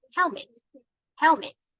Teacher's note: first syllable has the stress on right and you have to raise your voice at the first the first syllable · you have to raise the voice at the first syllable here